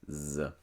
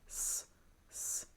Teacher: if your throat vibrates, if you feel your throat move, it makes a Z sound, Z. And if your throat does not vibrate, it makes an S sound